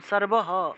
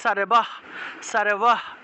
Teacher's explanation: আর যদি লাইনের একদম শেষে থাকে তাহলে সারবহ হটাকে পূর্ণ উচ্চারণ করতে হবে। যদি বাক্যের শেষে থাকে বিসর্গ তাহলে পূর্ণরূপে হ উচ্চারণ করব।